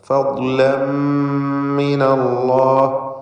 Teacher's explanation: തൻവീനിന് ശേഷമുള്ള മീമിൽ പൂർണ്ണമായും ലയിപ്പിച്ച് മണിക്കണം, ഇദ്ഗാം ബിഗുന്ന കാമിൽ.